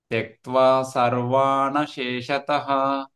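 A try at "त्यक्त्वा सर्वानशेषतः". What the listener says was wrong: సర్వాన్ వాతో సర్వాతోటి పంపించేసేయాలి. Okay, సర్వాకి గ్యాప్ ఇవ్వద్దు. సర్వాన్ అదొకటే stretch లో రావాలి. అశేషత సెపరేట్ గా రావాలి. నా అనేది సర్వాన్ తోటే ఉండాలి.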